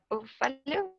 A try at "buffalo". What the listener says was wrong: replace this A with a schwa. It is E. No con E. Tienes que suavizarla mucho. Buffalo. Buffalo. Buffalo. Buffalo. Si notas mi pronunciación, a veces casi ni suena. Buffalo. Buffalo.